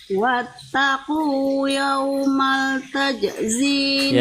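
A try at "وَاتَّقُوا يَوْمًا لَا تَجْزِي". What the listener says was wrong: Wattaqu yawman la tajzi. Ada la-nya di situ.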